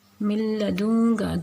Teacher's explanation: غنہ نہیں ہوگا تو اٹ مینس کہ یہاں پہ ایک الف کے برابر نہیں رکیں گے بلکہ فوراً ادا کر دیا جائے گا · یہاں پہ نون کو لام میں مدغم کر رہے ہیں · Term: بلا غنہ